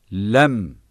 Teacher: dil ucuyla üst ön dişlerin etlerinden çıkar ince aşikar ve orta sesle okunur